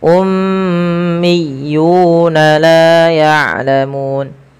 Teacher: Pada lafal miyuna ditekan huruf ya berharakat tasydidnya